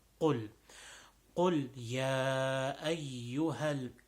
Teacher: So qul, the qaf again, back of the tongue, when it touches the upper part, the back of the mouth, right before the tonsils, and then it makes a pop sound